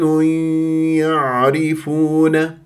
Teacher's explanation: الياء لا تجعلوها يا صافيه هذا غلط ليش لانه هو الحكم ادغام بغنه فلا بد ان تاتي بغنه من الخيشوم